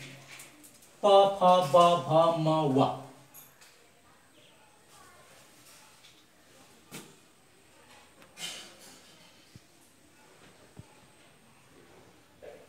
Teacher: ओष्ठ्य प, फ, ब, भ, म, व। दुवै ओठको सक्रियताबाट उच्चारण हुने।